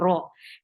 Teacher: ra is 2 counts long and it is heavy because whenever ra is with fatha or dhamma, it is heavy. The sound of heavy ra is the ra, and make it 2 counts long.